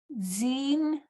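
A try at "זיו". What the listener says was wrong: Yep, this is ziv, If it was further down, it would be nun, but it's ziv.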